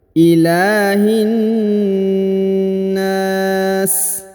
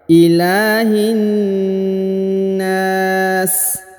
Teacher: Perhatikan huruf la dipanjangkan 2 harokat karena di atasnya terdapat tanda alif kecil yang merupakan tanda panjang 2 harokat ya.